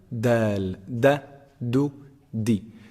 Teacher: The top of the tongue hits the upper incisors, the roots of the upper incisors.